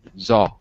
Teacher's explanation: You gotta kind of reduce the U sound. Just kind of more of an aw with your mouth open.